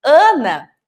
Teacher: Eu tenho a an inicial, que é o som nasal dessa letra